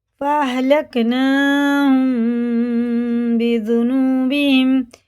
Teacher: میم ساکن کے بعد با آئے، جب میم ساکن کے بعد با آتا تو یہ ہوتا ہے اخفا شفی، غنہ اور اخفا دونوں کر کے پڑھنا